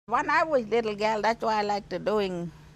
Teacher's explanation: she replaces the TH with a D phoneme